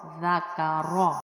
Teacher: ذال کو نرمی سے ادا کرتے ہیں اور را کو موٹا